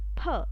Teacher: the lips they are closed and the tongue if i talk about that is touching the back of the lower teeth